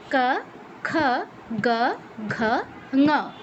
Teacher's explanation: জিহ্বার পেছনের অংশ কণ্ঠে টাচ করবে, কীরকম ক, খ, গ, ঘ, ঙ। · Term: কণ্ঠবর্ণ